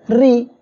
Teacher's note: র অক্ষরের নিচে জের আসছে, চিকন করিয়া পড়বেন